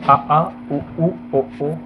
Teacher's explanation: स्वरों का उच्चारण करने पर जीभ का पीछे जाना ही पश्चस्वर कहलाता है